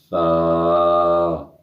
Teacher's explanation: اسے نرمی سے پڑھیں گے بغیر سیٹی کے · اس سا میں سیٹی کی آواز نہیں آنی چاہیے